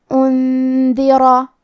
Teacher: اس مد میں ہم اپنی آواز 2 سے 4 مد کے برابر لمبی کریں گے۔ کلمت انذرا میں نون ساکن ہے، پھر حرف الدال ہے، یہاں حکم ہے اخفاء تو ہم یہ حکم کو غنہ کے ساتھ ادا کریں گے۔